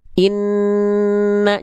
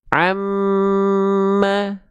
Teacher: Karena ada suara yang melipir ke rongga hidung dulu. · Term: gunah